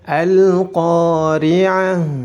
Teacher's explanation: Kemudian di situ terdapat ta marbutah. Ta marbutah apabila dalam keadaan waqaf harus diganti dengan huruf ha dan dalam keadaan sukun.